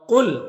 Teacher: قاف حروف مستعلیہ میں سے ہے تو اسے پر پڑھیں گے